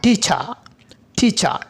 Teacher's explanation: অর্থাৎ এটি সেমি ফ্লোসিভ বলার কারণ হচ্ছে কি এটি ফ্লোসিভের মতো শুরু হবে, ফ্রিকেটের মতো শেষ হবে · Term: অ্যাফ্রিকেট সাউন্ড